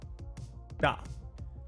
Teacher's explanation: But perhaps a better cue for practicing this letter is to think of an L and D. You want the starting tongue position of L. But you want the tongue hit of D. Da. But just a bit softer. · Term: Japanese R